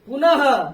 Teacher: और विसर्ग के मात्रा से एच ह का उच्चारण होता है।